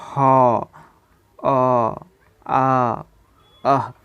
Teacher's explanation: ये सारी चीज़ें कंठ से उच्चारित होती है तो हम इसे कंठ वर्ण कहेंगे